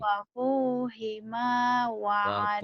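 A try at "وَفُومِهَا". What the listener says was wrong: Wafuhima. Siapa yang ngajarin hima?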